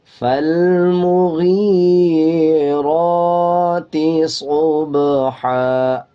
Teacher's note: را کے اوپر کھڑا زبر ہے، 1 سیکنڈ لمبا کریں گے، با کے اوپر جزم ہے، قلقلہ کریں گے۔